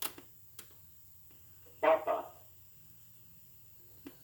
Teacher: a p does not have the puff of breath that it has in english